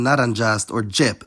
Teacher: postalveolar [ʤ] was entirely loaned in, like in nàrāndžast or džȅp